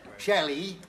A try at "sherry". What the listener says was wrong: No, sherry. No, sherry. You're saying Shelley.